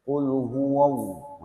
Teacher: Lafdzul jalalah ini adalah lafadz Allah ini namanya lafdzul jalalah. Lafdzul jalalah apabila sebelumnya itu ada harokat fathah, maka dia dibacanya tafkhim. Dia tafkhim atau tebal. Bunyinya o, ya. Tapi jangan lantas ketika menebalkan lafdzul jalalah itu wa-nya itu jadi wo.